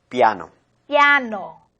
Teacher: La A se hace más fuerte. Por eso la vocal anterior I se transforma en una semiconsonante.